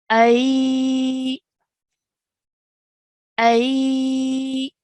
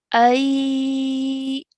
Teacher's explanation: We're going to start off with the sound of alif with a fatha, and then we are going to lean into the sound of ya sakin. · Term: ya leen